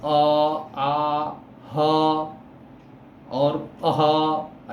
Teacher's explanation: अ आ ह और अह, ऐसा जो हम उच्चारण करते हैं ये कंठ से आवाज निकल रही है, तो इसको हम कंठ वर्ण कहते हैं।